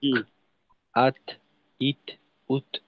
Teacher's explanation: আটকানোর পর যখন মাখরাজ থেকে পৃথক হব হালকা একটু বাতাস বের হবে। বাতাসটা আবার খুব বেশি জোরালো না।